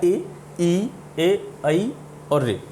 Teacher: जब हम इन स्वरों का उच्चारण करते हैं तो हमें ऐसा लगता है कि हवा जो है हमारे जीभ के अगले हिस्से से निकल रही है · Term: अग्र स्वर